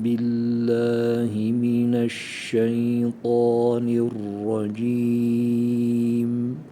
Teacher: dilin ortasından çıkaracağız Racim özellikle mim harfi Ondan sonra besmeledeki buradaki Mim harfini sıfat-ı lazimi vardır o gunne sıfatını hafiften belirtmemiz gerekiyor billahi mineşşeytanirracim çok hafif yani o gunne kokusu gelsin besmelede ise